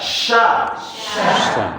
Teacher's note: Sya, lidahnya kemana? Lidah bagian tengahnya naik.